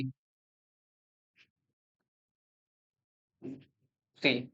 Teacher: लेकिन जब हम बोल रहे हैं री, तो ना तो हमारे जीव दांतों में टकरा रही ना तालु में टकरा रही, उन दोनों के बीच में एक जगह है वहां पे टकरा रही री। तो उसे बोलते हैं मूर्धा।